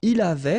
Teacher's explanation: final T not pronounced